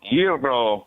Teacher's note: you got a little bit of a little trill in the R there